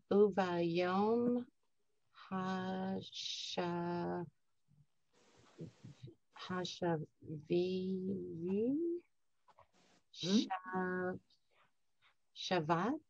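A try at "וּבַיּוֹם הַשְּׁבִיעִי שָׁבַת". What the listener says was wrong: Uvayom hashvi shavat. That's a silent shva. Uvayom hashvi shavat. Yeah, shavat.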